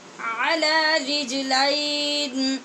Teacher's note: لام کے بعد یا لین ہے، اس لیے اس کو لام کی زبر کو آواز اٹھا کے پڑھیں گے